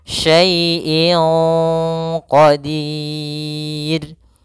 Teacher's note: Maka menyamarkannya langsung ke huruf qaf, bukan syai'in qa. Jangan pakai eng, tapi dia langsung disamarkan ke huruf qafnya.